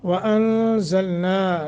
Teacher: नून साकिन है और आगे ज़ा इख्फ़ा करना है